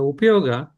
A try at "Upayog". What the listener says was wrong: Okay, remember, we are not going to say Upayog, without that line on the top. So if you read in the English translation, you are to say only when there is a line on the top. So in the word upayog, there is no line on the top, even though it says GA, okay, at the end.